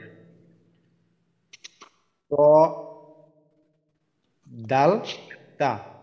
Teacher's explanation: 11 নম্বর মাখরাজ জিহ্বার আগা সামনের উপরের দুই দাঁতের গোড়ার সঙ্গে লাগাইয়া